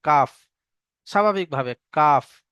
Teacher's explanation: কাফের মাখরাজ হলো জিভের গোড়া থেকে আরেকটু আগের দিকে, জিভের গোড়া থেকে আরেকটু আগের দিকে এসে ওই বরাবর উপরের তালুর সঙ্গে লাগিয়ে কাফ উচ্চারণ হয়, কাফ, স্বাভাবিকভাবে কাফ।